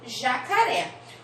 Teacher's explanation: na palavra jacaré, a última sílaba é o ré, a sílaba tônica é o ré, que é mais forte